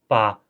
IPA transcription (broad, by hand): pa